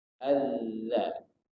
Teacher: yang penting bertemu ujung lidah bertemu dengan ujung gigi